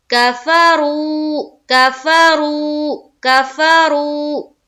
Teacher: رو میں ایک الف کے باقدر کھینچیں گے اور را کو پر کرتے ہوئے کھینچیں گے